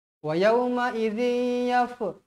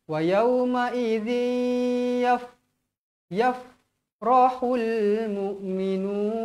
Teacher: Huruf fa tidak termasuk di dalam huruf qalqalah. Jadi jangan baca melantun